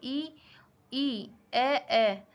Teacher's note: अग्र स्वर जीभा के अग्र भाग से उच्चारित